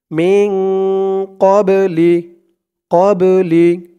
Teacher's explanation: এই বা টা হচ্ছে কলকলার হরফ ধাক্কা দিয়ে পড়তে হবে